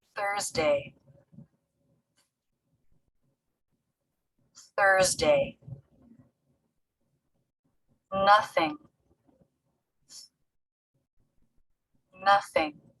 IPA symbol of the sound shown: θ